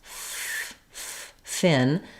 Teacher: I'm making that F sound with my teeth and my lower lip touching it's kind of the back the front of my teeth and